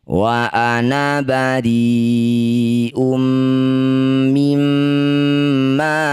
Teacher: Semua tulisan ana yang artinya adalah saya atau aku kemudian ditandai dengan tanda sifir atau bulatan kecil seperti ini, maka na-nya dibaca pendek ya, jangan dibaca panjang